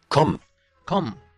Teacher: Without stressing, without duplication for the M.